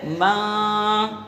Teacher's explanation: اخفا، تو اس میں غنہ بھی پایا جائے گا ایک الف کے برابر